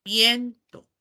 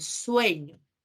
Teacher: la vocal se convierte en un dictongo en el español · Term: dictongación